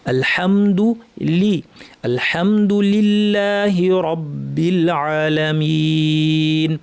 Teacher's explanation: যদি যেতে না পারি আলস্য করি তাহলে দুলি না হয়ে দুরি হয়ে যাবে। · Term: লামের মাখরাজে